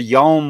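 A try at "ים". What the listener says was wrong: Yeah. So Yom is day, Yam is sea, and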